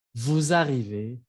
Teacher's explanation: pero no se pronuncia S, se pronuncia Z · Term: liaison